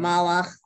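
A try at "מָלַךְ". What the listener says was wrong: Right.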